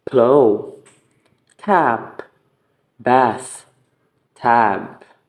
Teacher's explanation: The air is completely blocked by meeting both upper and lower lips. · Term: stop consonants